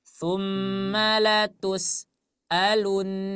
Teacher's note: Huruf sin itu memiliki sifat rokhawah. Ya, huruf sin itu memiliki sifat rokhawah. Suaranya mengalir. Jadi jangan sampai dia terputus. Kalau terputus berarti di sana ada jeda.